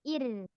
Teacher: Jangan sampai hilang getaran ro-nya. Ir. Tipis lagi ir. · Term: ro tipisnya